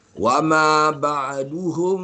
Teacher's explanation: dia tak 100% keluar daripada hidung sebab mulut masih terbuka sikit lagi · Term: ikhfa syafawi